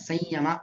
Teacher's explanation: ಸಂಯಮಾಗ್ನಿಷು ಯಕಾರ ಅನುನಾಸಿಕ ಮಾಡಿ ಹೇಳ್ಬೇಕಾಗತ್ತೆ. ಅನುನಾಸಿಕ ಯಕಾರ ಆದ್ಮೇಲೆ ನಾರ್ಮಲ್ ಯಕಾರ ಸಂಯಮಾಗ್ನಿಷು ಅಂತ ಹೇಳ್ಬೇಕು.